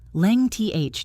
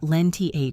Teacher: there is a consonant cluster before the th, and that cluster should not be dropped